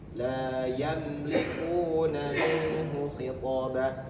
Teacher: Itu namanya izhar syafawi. Dan dibacanya mimnya jelas tidak ditahan.